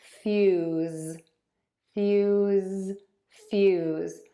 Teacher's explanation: When you have a voiceless and a voiced sound, after a vowel, the vowels might sound slightly different because the vowel before the S, which is unvoiced, will sound a tiny bit shorter. And the vowel before the Z, which is voiced, will sound a tiny bit longer · The difference is the voice box is on and moving.